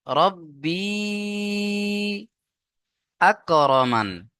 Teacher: ইয়া সাকিনের ডান দিকে জেরিয়া মাদ্দা, প্লাস উপরে মাদ আছে। মাদের পরে হামজা দ্বিতীয় শব্দে মাদ্দে মুনফাসিল, 2 থেকে 3 আলিফ টান দিয়ে পড়তে হবে।